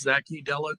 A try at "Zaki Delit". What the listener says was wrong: It's Zaki Delit. Zaki. It's a Z, not an S.